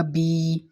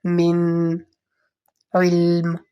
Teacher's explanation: کسرہ آپ کو پتہ ہے زیر ہوتی ہے اور اس کی سلو سی وائس ہوتی ہے، اور مطلب باریک ایک ہلکی ای کی آواز